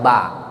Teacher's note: Jadi keluarnya dari bibir dua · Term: makhraj ba